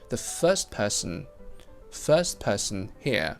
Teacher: St in first and also p in person, another consonant cluster. So we drop the T. It becomes the first person here.